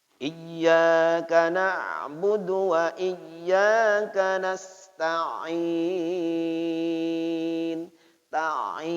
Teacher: Ya, wastul halqi. Ain itu keluarnya dari tengah tenggorokan, keluarnya lewat pangkal hidung.